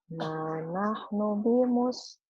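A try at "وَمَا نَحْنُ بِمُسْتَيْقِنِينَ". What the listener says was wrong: Maknya panjang.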